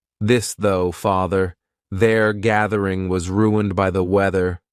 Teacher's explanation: Voiced means your vocal cords are going to vibrate. So, you're going to put your tongue in between your teeth and your vocal cords are going to vibrate when you aspirate the sound. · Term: voiced th